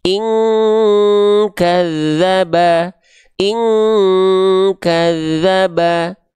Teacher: nun sukun atau tanwin berjumpa dengan Kaf dan Kaf baru dia menyerupai dengungan kekuatan Eng